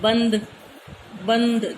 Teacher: अनुस्वार का उच्चारण नाक से किया जाता है, नाक से आवाज आती है। हम कहते हैं ना बंद बंद, जो बंद का जो नय है ना, वो नाक में से आवाज आई है, वो अनुस्वार के रूप में ऊपर बिंदी के रूप में लग जाता है, डोट के रूप में।